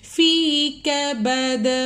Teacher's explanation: کبد کا جو دال ہے اس کو ہلا کر پڑھیں گے